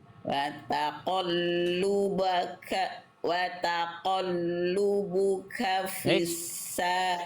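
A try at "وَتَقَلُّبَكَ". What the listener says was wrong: Taqallubaka. Tapi Bunda baca taqallubuka.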